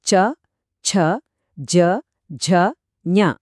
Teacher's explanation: ఇవి పలికేటప్పుడు నాలుక అంగిలిని తాకుతుంది